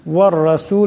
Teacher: এখানে রার উপর জবর আছে, এই রাকে মোটা আওয়াজে পড়তে হবে।